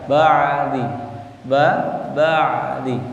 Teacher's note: ain di tengah tenggorokan